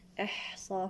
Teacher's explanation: أحصاه، هنا همس الحاء